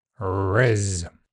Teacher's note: Starting with a smooth alveolar r, it moves to a near-close, near-front I, and ends on a voiced z.